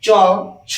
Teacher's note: উপরের ছোয়ালে যে গর্ত অংশটা আছে ওই গর্তটার নাম হচ্ছে তালু তালু স্পর্শ করছে জীব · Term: তালব্য বর্ণ